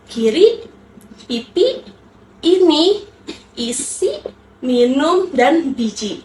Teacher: Lalu huruf vokal I itu tingkat tingkat kenyaringannya itu rendah. Ciri artikulasinya itu mulut menyempit, lidah dekat dengan langit-langit depan, ruang dan ruang resonasinya kecil.